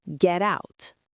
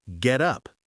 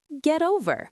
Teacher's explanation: This is the American flap t. When a t is between two vowel sounds, it becomes a soft d.